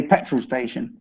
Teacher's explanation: we drop the T, so we say petrol station